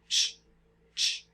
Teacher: It's that affricate sound. So it's a T and a sh at the same time. So that's a ch.